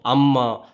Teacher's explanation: மகர மெய்யெழுத்து தனக்குரிய அரை மாத்திரை அளவில் முழுமையாக ஒலிக்கிறது